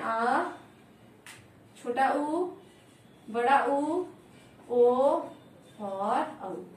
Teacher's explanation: इनका उच्चारण करते समय हमारी जीवा का पश्चिम भाग सक्रिय रहता है, इसलिए इन्हें पश्चिम स्वर कहते हैं।